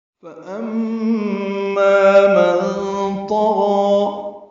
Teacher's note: فَأَمَّا مَن طَغَى، فا کو جلدی پڑھنا ہے، ام میں میم مشدد پہ غنہ ہے اور ما الف مدہ ہے، 2 حرکات لمبا ہے